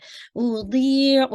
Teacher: दी को आपने हैवी करते हुए 2 काउंट स्ट्रेच करना है, या मदिया, ठीक है?